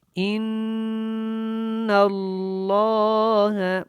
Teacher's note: نون کے اوپر غنہ اور لام کو موٹا پڑھنا ہے کیونکہ یہ اللہ والا لام ہے